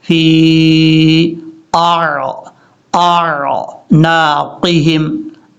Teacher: اور حمزہ کو عین کے ساتھ ملاتے ہوئے حمزہ اور عین میں فرق کرنا ہے. حمزہ سختی سے پڑھا جاتا ہے، عین نارمل طریقے سے پڑھا جاتا ہے